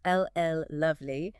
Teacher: Stretching that L sound slightly. · Almost unconsciously lengthening the very first sound of an important word. Like if you really enjoyed something, you might say it was ll lovely. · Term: draw initial consonant